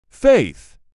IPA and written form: feɪθ (FAITH)